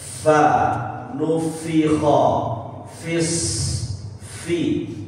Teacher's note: huruf fa baik dia berharokat ataupun tidak berharokat atau sukun, maka sama-sama mempunyai sifat berdesis Pak ya. Ada udaranya.